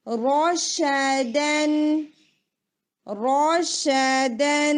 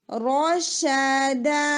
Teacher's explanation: اور را ہیوی ہوگا، باقی دونوں لیٹرز لائٹ ہیں